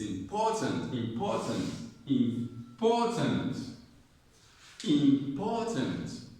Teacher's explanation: The syllable that has a stress is po.